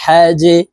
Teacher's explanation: এখানে জিম হরফ কলকলার হরফ তাই নিচের দিকে ধাবিত করে ধাক্কা দিয়ে উচ্চারণ করতে হবে